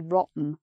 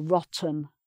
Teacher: you can pronounce that either with the T sound or without